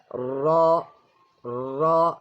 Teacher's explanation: the tip of the tongue lightly touches the roof of the front mouth, the upper front mouth